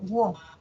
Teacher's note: Pero ahí hay un diptongo, wo. Ese diptongo es creciente, de cerrada pasa abierta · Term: diptongo creciente